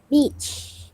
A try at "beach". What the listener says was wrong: Tu bunyi pendek. Kita tak ada belajar bunyi pendek. Panjang kan? Long vowel kena panjang kan?